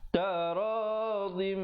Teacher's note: Taradim, idgham bi gunnah, masuk beserta dengung, tanwin bertemu mim, dengungkan 2 harakat.